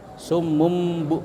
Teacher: Jadi itu bacanya iqlab, diganti dengan mim sukun, bukan nun, tapi tulisannya tanwin. · Jadi tanwinnya itu diganti dengan mim.